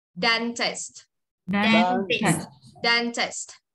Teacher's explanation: Đờ quay lưỡi trong và sờ tờ cuối bật ra nhé